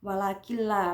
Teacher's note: nun sukun bertemu lam berarti idgham bila gunah dibaca nunnya tidak dibaca langsung walakilla langsung bacanya masuk ke huruf lam.